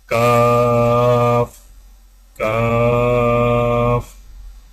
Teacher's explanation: کاف کی ادائیگی میں زبان کی جڑ کو کوے کے قریب تالوں پر لگا کر باریک آواز میں پڑھیں